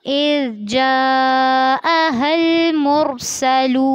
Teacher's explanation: इज़ जाअहल मुरसलून, इज़ में ज़ाल को नरमी से पढ़ना है, जा पे मत करनी है और हा को लाम से मिलाना है, लेकिन ध्यान रखना है कि लाम पर झटका ना हो। अल मुरसलून में रॉ को पुर करना है और लाम वाव पेश लू में लाम को लंबा करना है।